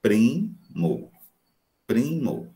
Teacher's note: Na primeira sílaba está lá a consoante oclusiva P, seguido de uma vibrante, re. · O P e a vibrante, a oclusiva mais a vibrante, juntinhas dentro da mesma sílaba, formam encontro consonantal.